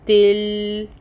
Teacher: لام کو ہلائے بغیر پڑھنا ہے، تا کے ساتھ جوائن کریں گے، تل، اور پھر قوف ادا کریں گے، قوف پر ہے، مفخم ادا کریں گے اس کو، اور اس کے اوپر فتحہ کی حرکت ہے جس کو 1 کاؤنٹ پڑھا جائے گا، یہ حروف مستعلیہ میں آتا ہے۔